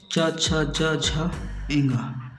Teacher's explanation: चा, छा, जा, झा, एंगा ये तालु से उच्चारित वर्ण है